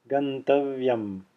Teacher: as you extend the va it is heard rather than being silent because it is a semivowel which is voiced and heard as it's extended so that concludes all of the